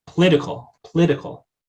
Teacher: most speakers of english will have a voiceless liquid there if they're deleting their schwas